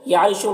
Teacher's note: را کے نیچے زیر، را کو باریک پڑھیں گے اور یہاں پر وقفی کی صورت میں مد عارض وقفی ہوگا تو اس طرح سے پڑھیں گے۔